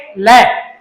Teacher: जीभ कहां गई, ऊपर की तरफ, और अंदर की हवा है वो जीवा के दाएं और बाएं से निकलती है, इस कारण इसको क्या कहेंगे, पार्श्विक। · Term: पार्श्विक व्यंजन